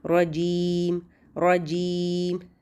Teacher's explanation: जीम के लिए भी तालू के साथ ज़बान लगानी है लेकिन बिल्कुल चिपका देनी है, इसमें गैप नहीं छोड़ना।